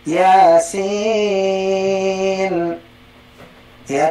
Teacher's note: Nah simbolnya yang tanda halis itu 6 harokat semua. Ya contoh Yasin, berarti sinnya 6 harokat ya. Yasin ya, 3 kali ngayun 6 lazim ya.